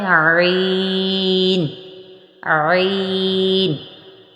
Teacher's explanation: یہ حلق کے درمیان والے حصے سے ادا ہوگا